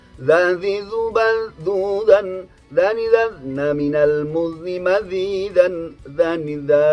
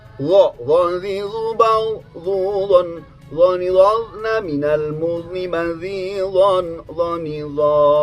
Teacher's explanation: Huruf dzal ini ada di ujung lidah bagian depan.